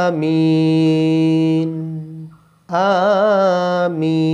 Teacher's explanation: আ 1 আলিফ টান হবে, আর মি 3 আলিফ টান হবে